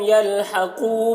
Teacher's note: قاف کو پر پڑھنا ہے اور یہاں پر واو مدہ ہے، کھینچ کر پڑھیں گے ایک الف کے برابر · لم کی میم میں اظہار شفوی ہو رہا ہے، میم کو ظاہر کر کے جلد پڑھنا ہے جیسے ہم تم کی میم کو پڑھتے ہیں۔